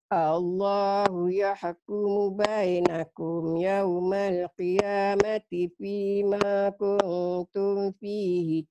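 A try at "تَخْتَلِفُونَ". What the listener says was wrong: Jangan mulutnya jangan dimonyongin, jangan tuh, tapi tah, mulutnya dibuka lebar kayak senyum.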